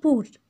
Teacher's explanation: আমরা কিন্তু পুরও বলি না, যার কারণে এখানে পুর রয়ের উচ্চারণটা পাচ্ছি